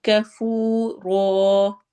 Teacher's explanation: کفو میں واو مدہ ہو رہی ہے اور رو میں الف مدہ کریں گے